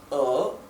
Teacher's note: como tiene el tono, este es el tercer tono, que baja y sube